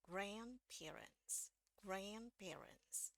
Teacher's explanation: bunyi d-nya ini bisa kita hilangkan ya jadi bunyi d-nya kita anggap hilang di sini tinggal langsung masuk ke DII n langsung masuk ke